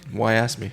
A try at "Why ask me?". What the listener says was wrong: No, you got to put the emphasis on the me. Why ask me?